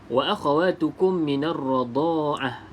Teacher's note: dengung 2 harakat, tutup rapat bibir atas dan juga bibir bawah